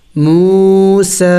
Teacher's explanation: وَإِذْ وَعَدْنَا، میم واو پیش مو، یہ واو مدہ ہے، واو مدہ کہتے ہیں واو ساکن سے پہلے پیش ہو اور اس کو بھی ایک الف کے مقدار لمبا کیا جاتا ہے